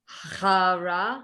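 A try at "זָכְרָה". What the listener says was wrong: But there's a dot inside of it. So it's not chara, but exactly.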